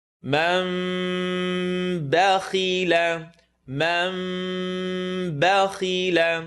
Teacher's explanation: It's a baby meme. The meme is going to make a vibrating sound between our lips.